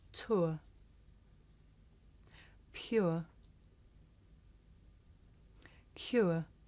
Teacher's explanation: this is a diphthong a double vowel sound the shape the mouth makes changes from the beginning of the sound to the end